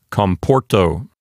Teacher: Therefore, the penult is a long syllable, and so it will keep the accent for itself. It will not jump over to the antepenult.